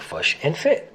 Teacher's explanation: the kit-foot vowels are reversed for the words fish and foot to sound like fush and fit.